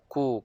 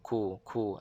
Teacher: pangkal lidah sentuh pada permulaan lelangit keras. Ataupun di antara tu, di antara lelangit lembut dan lelangit keras. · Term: kaf